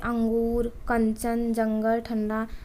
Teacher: अनुस्वार के उच्चारण में वायु नाक से निकलती है और उच्चारण झटके के साथ होता है। जैसे जब आप बोलते हैं तो आवाज़ मुख से ना निकल करके नाक से निकलती है, जैसे अंगूर, कंचन, जंगल, ठंडा।